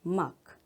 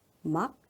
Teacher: 마지막에 파열이 되는가 되지 않는가